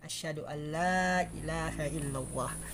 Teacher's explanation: asyhadu an la-nya panjang, tidak boleh dipendekkan